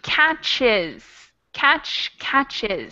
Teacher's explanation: catch ends in a sibilant CH sound so it becomes catches